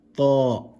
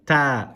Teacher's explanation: Ta, full mouth letter. Very different from ta, which is empty mouth. It's as if your mouth is empty.